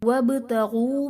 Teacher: وابتغوا میں با حرف قلقلہ ساکن ہے تو یہاں پر قلقلہ خوب ظاہر کریں گے